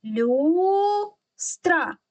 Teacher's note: тому в цьому слові перший склад наголошений тепер робимо звуковий аналіз перший звук ль - приголосний м'який